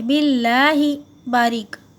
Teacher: اللہ کا جو لام ہے وہ باریک پڑا جائے گا، باللہ موٹا نہیں پڑ رہا یہاں پر